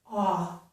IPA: ɔ